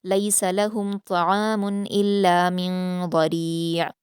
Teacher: نون ساکن کے بعد ضاد ہے تو یہاں من میں اخفا ہوگا۔ من ضریع، لاسٹ میں عین ساکن کی آواز کو واضح کر کے پڑھیں گے۔